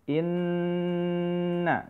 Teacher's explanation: innanya ditahan agak lama karena di sini ada huruf gunnah ya